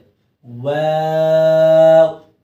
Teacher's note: واو جو ہے وہ ہونٹوں کی گولائی سے ادا ہوتا ہے۔ جب ہم واو پڑھنا شروع کریں گے تو ہونٹوں کو چھوٹا سا گول کر لیں گے، ٹھیک ہے، اور پھر اس کے بعد اس کو کھینچ کر پڑھنا شروع کریں گے 5 الف کے برابر۔